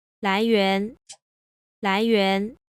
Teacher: notice that the entire second syllable is a little bit lower. That is, it starts lower than the first syllable starts, and it ends lower than the first syllable ends. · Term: 2-2 combination